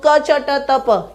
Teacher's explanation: एक पे कंठ है, दूसरे पे तालु है, तीसरे पे मूर्धा है, चौथे पे दंत है और 5वें पे ओष्ठ है। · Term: उच्चारण स्थान